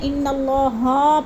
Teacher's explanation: اکثر اس میں مسٹیک کر جاتے ہیں، ان اللہ ہا پڑھ جاتے ہیں، یعنی زبر کو، ہا کی زبر کو لمبا کر جاتے ہیں